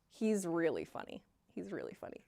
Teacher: this is an example of funny with up intonation